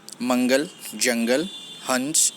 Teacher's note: अनुस्वर का उच्चारण न और म के समान ही होता है।